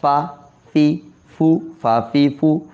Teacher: اوپر کے دانت نیچے کے ہونٹوں کے ساتھ